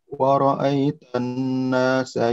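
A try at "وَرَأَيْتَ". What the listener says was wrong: Jangan woro, woro. Ro-nya tidak maju. Waro, ro. Ujung lidahnya taruh di belakang gusi. Waro.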